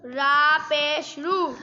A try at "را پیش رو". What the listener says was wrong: غلط واو کو لمبا کرو نا واو مدہ ہے را پیشوارو